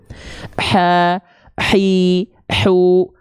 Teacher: kalau dia tepat dilafalkan dari tengah tenggorokan tepatnya pada bagian organ katup epiglotis maka dia akan menghasilkan karakteristik nafas yang berbisik karena huruf H kecil itu punya sifat namanya hams hams itu · huruf hak kecil harus berbisik dan akan otomatis berbisik apabila dilafalkan tepat dari bagian tengah tenggorokan kita ha hii hu Bah gitu nah banyak orang melafalkan ha kecil